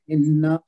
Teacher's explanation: नून पे तशदीद है, उसको गुन्ना करके पढ़ेंगे